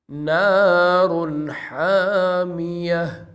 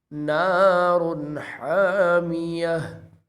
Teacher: ہم نے یہاں غنہ نہیں کیا بلکہ بغیر غنے کے پڑھا ہے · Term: اظہار